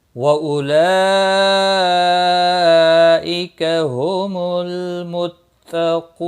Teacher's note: क़ू वाव मद्दा है, 1 अलिफ के बराबर खींच कर पढ़ेंगे और वक़फ़ की सूरत में नून साकिन पढ़ा जाएगा। वक़फ़ बिल इस्कान होगा, मद्दुल आरिज़ वक़फ़ी होगा, 3 से 5 अलिफ के बराबर खींच कर वक़फ़ करेंगे